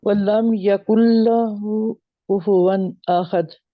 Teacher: कुन्ना नहीं पढ़ेंगे, नून को गायब कर देंगे, नून जो है वो इसी में मर्ज हाँ हो जाएगी, इसी में मिल जी जाएगी।